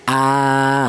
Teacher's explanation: Ini dibaca panjang ya, dua ketukan atau dua harakat. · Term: mad badal